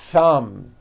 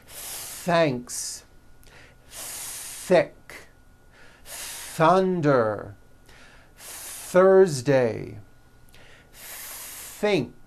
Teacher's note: you must stretch out the th sound and hear the air friction